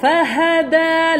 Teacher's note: Makhraj untuk huruf dal, hujung lidah belakang gigi atas.